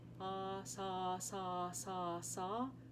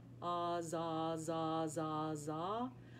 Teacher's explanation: the only difference is that my voice remains engaged on the Z, whereas s, it disengages on the S.